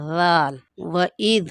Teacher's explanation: اوپر اور نیچے کے دانتوں کے درمیان میں زبان رکھ کر اس طرح سے درمیان میں زبان آئے گی اور ذال نرمی سے ادا ہوگا